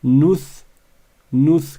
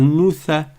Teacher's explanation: Tu prononces la lettre et tu t'arrêtes dessus. C'est-à-dire que tu ne vas pas mettre de voyelle. Tu ne vas pas dire noutha. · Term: soukoun